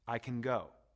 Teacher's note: the word can is usually not stressed when it comes before a base form it sounds short and weak